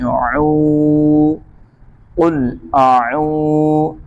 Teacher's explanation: واو کے اوپر جزم ہے، واو مدہ ہے، اس لیے واو کو کھینچیں گے۔